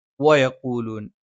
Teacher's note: വ ചുണ്ട് വൃത്താകൃതിയിലാണ്. യ നാവിന്റെ മധ്യഭാഗം മേലെ അണ്ണാക്കിലാണ്. നാവിന്റെ ആരംഭം മേലെ അണ്ണാക്കിൽ സ്പർശിച്ചുകൊണ്ടാണ്.